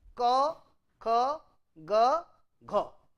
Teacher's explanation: So, difference is unvoiced, unaspirated, unvoiced, aspirated, voiced, unaspirated, voiced, aspirated. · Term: velar consonant